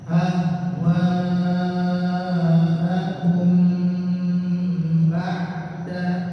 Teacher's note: mim ketemu dengan ba, ada hukum ya ikhfa. Ya, baca bagaimana ditahan sebentar ya.